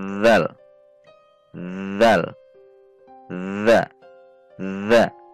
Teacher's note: atas ujung lidah dipertemukan dengan ujung 2 gigi seri atas, sehingga berbunyi huruf dzal, dzal, dza, dza.